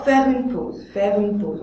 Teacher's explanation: On fait ici un enchaînement et on laisse tomber le E muet.